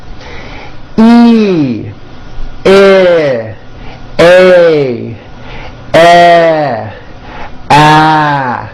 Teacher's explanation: Notice with each of these vowels, my jaw is opening a little bit more and more. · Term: front vowels